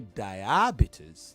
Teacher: If you say diabetes, then you put the stress on the first syllable.